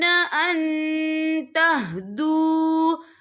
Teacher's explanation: नून साकिन की आवाज को नाक में छुपाएंगे। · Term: इक्फा